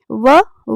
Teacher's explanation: व जो है दंत व्य तथा ओव्य वर्ण है यानी कि व को दांत से और ओष दोनों से बोला जाता है और यह छोटा उ या बड़ा उ प्लस अ से मिलकर